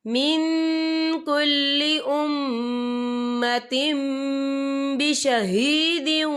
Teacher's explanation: یہ دیکھیں من کل امتم، یہاں تا کے نیچے تنوین ہے، تنوین کے بعد جو ہے با آ رہا ہے، تو یہاں پر انقلاب ہوگا یعنی تبدیلی ہوگی۔ ہم پچھلے میم کو اگلے میم کے ساتھ ملا کر پڑھیں گے اور ہم یہاں غنہ بھی کریں گے